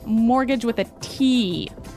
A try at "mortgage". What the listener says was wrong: Yeah, it has a T in it, but you don't pronounce it. You say mortgage. Mortgage. Not mortgage.